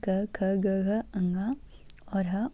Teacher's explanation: क, ख, ग, घ, अंगा, ह, विसर्ग, ये हम कंठ से बोलते हैं।